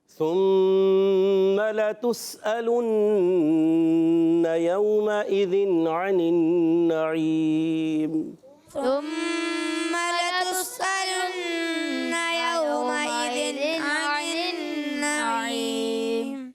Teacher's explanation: نون مشدد میں بھی ایک الف کا غنہ ہوگا